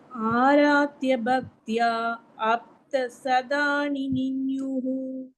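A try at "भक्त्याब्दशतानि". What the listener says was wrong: அப்தன் தனியா சொல்ல வேண்டாம், பக்த்யாப்த.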